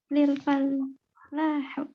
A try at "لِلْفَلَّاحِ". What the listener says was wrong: Oh, enggak kasroh dong. Lil fallahi. Karena